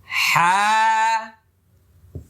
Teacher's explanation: দুই নম্বর মাখরাজ মানে কন্ঠনালী হল। গলার মাঝখানে গলার মধ্যখান। হা ওকে। হা অনেকটা চাপাচাপি করার দরকার নাই।